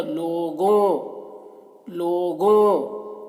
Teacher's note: تو اسے اس طریقے سے پڑھیں گے: لوگوں، لوگوں، لام واو لو، گاف واو گو، لوگو، نون غنہ۔ اب نون غنہ آ گیا تو اس کی آواز ناک میں پہنچے گی تو ہو جائے گا لوگوں، لوگوں۔